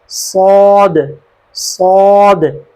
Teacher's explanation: سیٹی کی آواز بھی آنی چاہیے کلیئر، اور موٹی آواز، بھاری آواز ہو ذرا دباؤ کے ساتھ